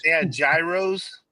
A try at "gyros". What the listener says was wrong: You don't pronounce the G. Just let you know.